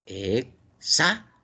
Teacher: la palabra examen, su mayor fuerza de voz está en la penúltima. Examen, penúltima. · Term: grave o llana